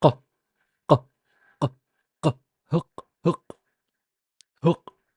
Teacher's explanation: That it's basically just you block the air by touching the back of your tongue to the uvula. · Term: uvular